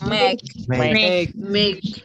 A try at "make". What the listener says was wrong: Make enak aja. Bacanya A, bukan E.